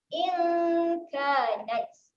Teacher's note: kita punya waktu dengung tu kita dah letak dekat makhraj huruf kaf di pangkal lidah. Dengung dekat situ In kanat.